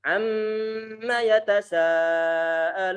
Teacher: getaran di sini untuk huruf nun ataupun mem yang bertasydid adalah gunnah, getaran ataupun penahanan suara dengungan yang paling sempurna. Sehingga perlu untuk ditahan yang lama di sana.